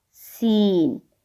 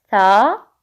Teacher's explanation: सीन के अंदर एक सीटी की सी आवाज है, विस्लिंग साउंड है, जो कि सा के अंदर नहीं है।